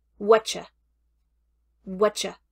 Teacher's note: whattcha is a poor contraction for the woods what and you that T at the end of what connects with the y at the beginning of you with a sound of CH between them